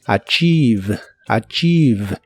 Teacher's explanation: No se pronuncia ninguna E en esta palabra, pero sí una I larga o doble.